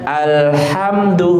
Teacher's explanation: huruf lam itu tawasud, ya. Ketika dia mati harus sedikit mengalir. Biar apa? Biar nanti dia nggak putus atau dia nggak mantul.